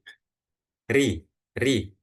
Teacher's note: Jadi belakang lidah enggak dinaikkan ketika ro itu berharakat kasrah. · lidahnya itu nggak menebal, tapi biasa aja, sehingga rongga mulutnya juga nggak menyempit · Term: ro tipis, ro tarqiq